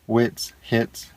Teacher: The C is a TS sound, so you pronounce it just like in itsy bitsy, wits, hits, etc. Some Esperanto examples are cervo, etso, facila.